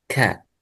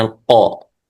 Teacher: يعني الكاف أقرب إلى الفم من القاف